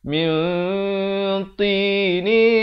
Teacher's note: min ini ikhfa dibacakan dengan samar dua harakat. Jangan baca min, itu bunyi jelas, bunyi izhar.